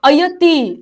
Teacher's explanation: अयतीचा नंतरचा जो विसर्ग आहे तो बोलायचा नाही कारण पुढे श्र आहे